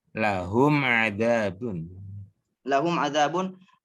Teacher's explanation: Mim sukun bertemu ain ya. Maka mimnya harus dibaca jelas. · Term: izhar syafawi